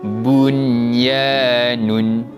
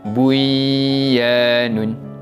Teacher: Kita hanya menjelaskan bacaan nun mati tanpa dengung. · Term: izhar mutlak